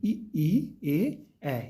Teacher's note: इन अग्र स्वरों को उच्चारण करने में जिह्वा का आगे वाला भाग प्रभावित होता है, या आगे वाले भाग से ही हम इनको उच्चरित करते हैं।